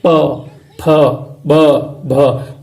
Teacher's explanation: आपकी जो जीभ है वो ना दांत के टच करती है, ना तालु के, ना मूर्धा के, ना कंठ के, केवल आपके होठ बोलते हैं। अब होठ को रोक के बोल के दिखाओ, नहीं बोल सकते।